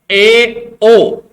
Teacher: अर्ध विवृत स्वर, इसमें क्या होता है, मुंह है वो आधा खुलता है